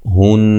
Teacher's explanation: نون مشدد پہ غنہ ضروری ہے